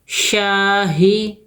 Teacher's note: شاہ میں الف مدہ ہے دو حرکت کھینچیں گے ہا کو نہیں کھینچنا ہے